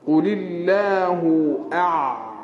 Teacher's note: huruf ain buka tekak tu